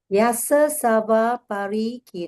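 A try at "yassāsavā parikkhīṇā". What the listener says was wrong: Yasa seva, that is one word. Yasa seva parikina.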